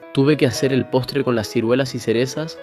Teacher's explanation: En el español canario predomina el ceseo, es decir, no se distingue entre la S y el sonido interdental de la Z o la C ante la E y la I